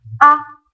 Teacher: it sounds pretty much like the flat tone but it sounds shorter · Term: neutral tone